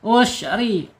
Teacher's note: Ketika bergetar tarik ya. Ketika bergetar tarik ke dalam. Ya, tarik ke dalam lidahnya. Jadi bergetarnya tertahan dengan inhirof ya.